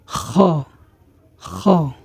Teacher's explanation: তখন আমরা গলা যেভাবে ঝেড়ে সেই গলাটা ক্লিয়ার করি, তো ঠিক তেমনিভাবে উচ্চারণটি হবে খ, খ। তারপরের হরফ হচ্ছে দাল।